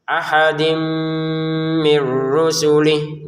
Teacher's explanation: Kalau ini tanwin bertemu mim kita baca dengan dengungan